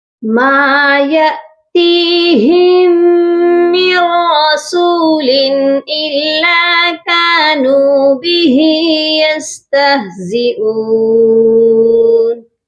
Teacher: میم کے ساتھ الف مدہ ہے، اس کو ایک الف کے برابر لمبا کریں گے